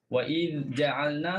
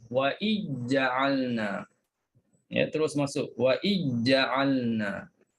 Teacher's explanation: Kemudian juga Hisham idghamkan dal kalimah iz ke dalam huruf jim. Ke dalam huruf jim dia masukkan.